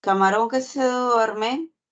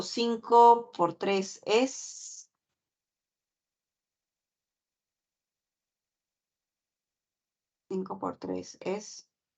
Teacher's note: se caracteriza porque el tono final ni sube ni baja se queda suspendido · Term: horizontal